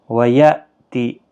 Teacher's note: ویأتی، یہاں پر بھی حمزہ ساکن جھٹکے کے ساتھ پڑھا جائے گا۔